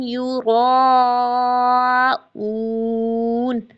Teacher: یہاں پر یہ مد متصل ہے، حمزہ اسی کلیمے میں ہے، اس کو 4 to 5 کاؤنٹس کھینچنا ہی کھینچنا ہے